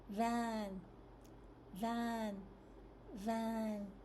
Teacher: the bottom lip touches the upper front teeth